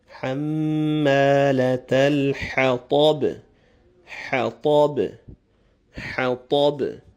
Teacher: The ha is the coarse strong ha. Then you have the ta, similar to the ta, but it's a full mouth emphatic letter, ta. And finally the last letter will be echoed, hatab.